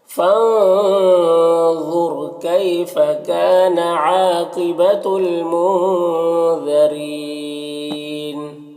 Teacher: کیفا میں یالین سے نرم آواز کے ساتھ جلد پڑھیں گے۔ کاف میں الف مدہ ہے، ایک الف کے برابر کھینچیں گے۔ · یہاں پر الف لام حروف قمری میم کے شروع میں ہے تو لام کو پڑھیں گے، الف کو نہیں پڑھیں گے۔ نون میں اخفا ہوگا، ظال کو باریک پڑھیں گے اور را کے نیچے زیر را کو بھی باریک پڑھیں گے، اور یہاں پر وقف کی صورت میں مد عارض وقفی ہوگا تو اس طرح سے پڑھیں گے۔ · فانظرنا، نون میں اخفا ہوگا، ظا حروف مستعلیہ میں سے پر پڑھیں گے اور را کو بھی پر پڑھیں گے